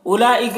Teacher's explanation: لام میں جو مد ہے مد متصل سے 3-4 الف کے برابر کھینچتے ہیں